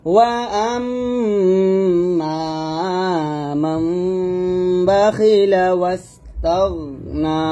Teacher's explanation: ওয়া আম্মা মান বাখিলা ওয়াস্তাগনা, তো মাম আমরা এখানে কি করব, গুণনাতে করব। নুনের জায়গায় আমরা মিম পড়বো।